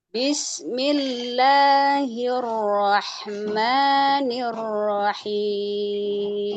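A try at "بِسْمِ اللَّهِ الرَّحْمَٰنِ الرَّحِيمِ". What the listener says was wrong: Nah, hati-hati tidak boleh mantul. Jadi ketika ngalir antara suara dan juga ngalirnya udara, ya, nafas, itu harus dilemahkan, mulai melemah. Kalau terlalu kuat, nanti bakal mantul.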